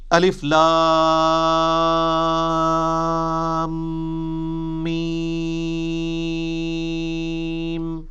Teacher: اور لام اور میم چونکہ اس کا جنکشن ہے تو میم کے اوپر تشدید بھی ہے، غنہ بھی ہو رہا ہوگا